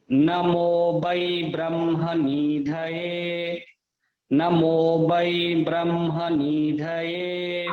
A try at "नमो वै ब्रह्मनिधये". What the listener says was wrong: दो गलतियां हैं, एक तो वै, नमो वा है, और एक ब्रह्म के बाद निधये, नी शॉर्ट है, स्मॉल, छोटा वाला है, ठीक है। ब्रह्म निधये, निधये नहीं, ब्रह्म निधये, नी को नहीं खींचना, नी दीर्घ नहीं है, ठीक है।